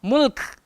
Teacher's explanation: kalau berhenti dekat situ kena ada hamas, angin keluar, angin kaf